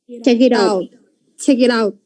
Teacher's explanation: It sama out ini disambung karena dia ketemu vowel lagi ya. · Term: word connection